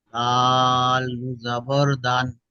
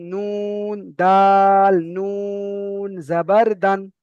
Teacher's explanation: নুনটা তিন আলিফ টান দিয়ে বলতে হবে